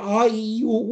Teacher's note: Ich mache das einmal hier, als ich muss den Mund aufmachen und wenn ich jetzt hier A, I, U, U sage, wirst du feststellen, wenn du dich beobachtest, öffnest du jedes Mal kurz die Gurgel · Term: Ain